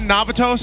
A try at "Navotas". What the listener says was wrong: you slipped on Navotas. You said Navatos. It's Navotas. Navo. It's like Nabutas, but Navotas.